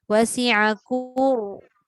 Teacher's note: Tebalkan dia. Tebal ra tu bukannya pada hujung lidah je. Dia angkat pangkal lidah sikit ke belakang. Dia gemukkan sikit lidah tu.